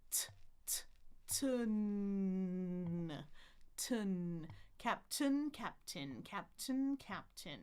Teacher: I'm going to end up with the N on the bump. But remember the air goes out my nose because it's a nasal sound.